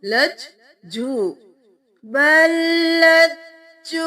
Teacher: जीम को दो बार क्योंकि तशदीद है।